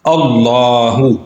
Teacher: یہاں پہ لام سے پہلے حمزہ ہے اور اس کے اوپر زبر ہے، اس لیے اس لام کو ہم نے موٹا ادا کرنا ہے۔